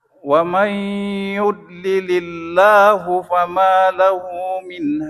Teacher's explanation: Ya Allahnya dibaca tipis